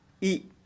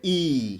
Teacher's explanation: यह दीर्घ स्वर है क्योंकि इसमें बोलने में अधिक समय लगा